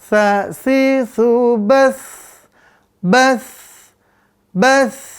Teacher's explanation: Mengalir sempurna. Maka dia rokhawah.